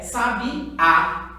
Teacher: Ela está acentuada na última sílaba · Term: oxítona